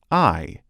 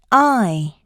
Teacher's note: is produced by rapidly moving the tongue from the back, low part of the mouth to the forward, high part of the mouth. The jaw begins in an open position then rapidly moves to an almost closed position. · The jaw begins in an open position then rapidly moves to an almost closed position. Due to the mouth being open, the lips begin unrounded and apart and move into a retracted state, like a slight smile. The /aɪ/ is tense and long in duration.